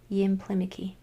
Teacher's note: I'm going to accent that third syllable from the end, the third vowel from the end.